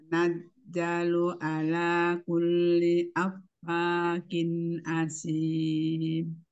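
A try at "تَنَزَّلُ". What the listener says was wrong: Tadi sebelumnya zainya udah bagus Umi. Zainya balik lagi ke huruf jim. Latihan di huruf Zai, Yomi.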